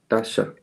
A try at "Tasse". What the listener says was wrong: It's cup is Tasse, just s, not sh. education, like sh, and there is sun, s.